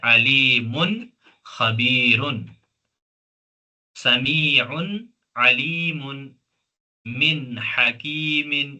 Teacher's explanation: نون کو پوری طرح واضح پڑھیں گے، آواز کو نہیں چھپائیں گے، گنہ نہیں کریں گے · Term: اظہار